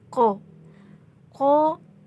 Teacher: ini cara pengucapannya dari tenggorokan bagian bawah